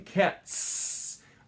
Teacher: So that's why in cats, it ends with a s sound because T is voiceless, so it's natural just to keep using the voiceless s sound.